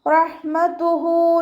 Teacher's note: ഹന് മഖ്റജ് വസത്തുൽ ഹൽക്കാണ്, തൊണ്ടയുടെ മധ്യഭാഗം